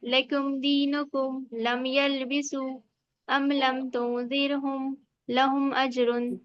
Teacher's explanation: मीम साकिन की आवाज को जाहिर कर रहे हैं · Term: इजहार शफवी